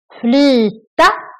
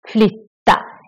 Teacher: In the first one, we make the Y very long because there's just one consonant, the T coming after, one T coming after. And the other one, we have two T's coming after. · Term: long version of the Y